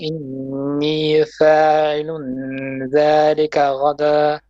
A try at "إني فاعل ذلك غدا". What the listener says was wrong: Make your ayn more clear. Again.